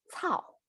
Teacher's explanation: same vowels same falling tone